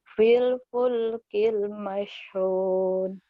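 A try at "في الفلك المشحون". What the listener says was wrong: Bagus.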